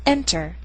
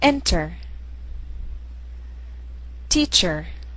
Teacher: The stress is on the first syllable, not e r.